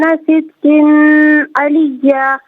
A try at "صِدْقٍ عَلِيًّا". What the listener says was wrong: ماشاءاللہ بہت اچھا پڑھا آپ نے، صدقن نہیں صدقن علیہ، کیونکہ یہاں پر غنہ یا اخفاء نہیں ہوگا۔ جزاک اللہ۔ السلام علیکم۔